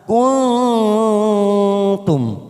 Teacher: Kita samarkan kuntum, siap masuk pada huruf ta. Jadi huruf nun sukun kita samarkan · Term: ikfa